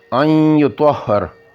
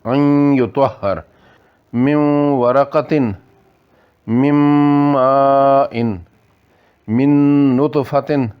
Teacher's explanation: نون نی آواز تھوڑی جی باقی رہی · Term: ادغام ناقص